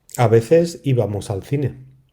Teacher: the C and Z sound in Spain, most of Spain really, and how it's pronounced with a kind of a TH sound.